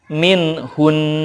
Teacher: Kemudian min hunna, ketika waqaf dibacanya min hun. Karena nun bertasydid merupakan gunnah, di sana gunnah dulu baru sukun.